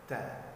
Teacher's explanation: Karena sifat ta, salah satu sifat huruf ta adalah mahmus, yaitu berhembus, mengeluarkan suara yang berhembus. Tidak sofir ya teman-teman, tidak berdesiran yang kuat, tapi dia cuma berhembus sekedarnya